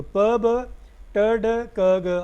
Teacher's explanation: ब ड ग सारे के सारे वॉइस्ड हैं।